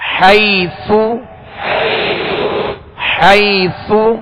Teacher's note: سا کو نرمی کے ساتھ پڑھیں گے، اس میں سیٹی کی آواز بالکل پیدا نہ ہو اور نہ ہی اس کی حرکت یعنی پیش دراز ہو۔